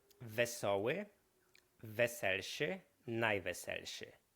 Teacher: czyli o zamienia nam się na e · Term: vowel alternation